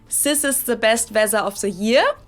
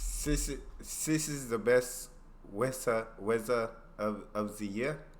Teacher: many many Germans can't really pronounce that and instead will either replace the th with an S or a z sound